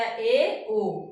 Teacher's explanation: अर्ध संवृत हमारा मुख क्या है इसमें आधा बंद है